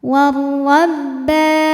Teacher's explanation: dibunyikan secara tafkhim karena berharakat fathah maka dibaca tebal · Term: alif lam syamsiyah